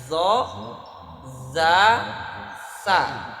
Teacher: Zo, za, sa dari ujung lidah nempel ke ujung gigi yang atas.